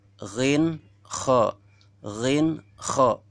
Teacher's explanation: keluar dari ujung kerongkongan, lebih dekat dengan mulut